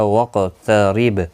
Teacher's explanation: قاف مستعلیہ ہے، پر پڑھا جائے گا اور را زیر کی وجہ سے باریک پڑھا جائے گا